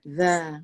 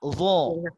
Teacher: Di antara sifatnya yang beza adalah kalau zal ini dia istifal. Dia lidah nih lurus saja. Tapi kalau dha dia tebal, isti'ala dha.